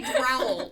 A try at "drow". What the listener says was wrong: Drow, but it's D-R-O-W, not D-R-O-W-E-L.